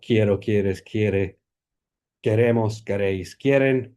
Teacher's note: all of the forms here that have stress on the root have this diphthong in them, and the ones that have stress on the ending instead have no diphthong, and they have a monophthong e.